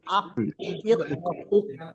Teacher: জিভের গোড়া এবং তার বরাবর ওই বরাবর উপরের তালুর সঙ্গে লাগিয়ে উচ্চারিত হয় কফ। যেমন দেখেন হামজা কফ জবর আক, হামজা কবজের ইক, হামজা কফ পেশ উক।